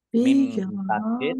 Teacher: Bijahalatin dibaca gunnah atau mendengung ditahan dua harokat.